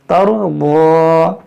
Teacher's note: را کو موٹا پڑھیں گے، را ساکن سے پہلے زبر ہو یا پیش ہو تو بھی را کو موٹا پڑھا جاتا ہے، اور ضاد حرف مستعلیہ ہے، اس کو موٹا پڑھیں گے، تَرْضَىٰ۔